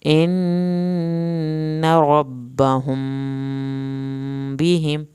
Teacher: نون کی شد پہ ایک الف کے برابر دیر لگے گی ، ربهم میم ساکن کے بعد با ہے، ایک الف کے